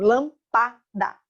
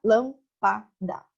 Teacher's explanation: A sílaba mais forte ficou na terceira posição. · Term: proparoxítona